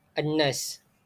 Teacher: cara ia dibaca adalah dengan memasukkan huruf lam tersebut ke dalam huruf-huruf syamsiah, iaitu nun yang terdapat pada an-nas ini. Cara untuk mengetahui alif ia sama ada ia adalah alif lam syamsiah atau bukan ialah terdapat tanda syaddah pada selepas huruf alif lam tersebut. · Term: alif lam syamsiyah